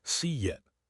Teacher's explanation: If I say see it, my mouth is wide. To move to it, I make a Y shape. See it. There is an invisible Y.